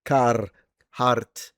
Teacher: With a trill is my favorite. Trilly, roll the r.